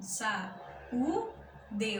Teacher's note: O u é bem forte. O u aqui não é semivogal. O u é vogal, porque é forte, né? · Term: vogal forte